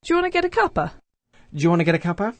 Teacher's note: the first two words, do you, there we have an example of coalescent assimilation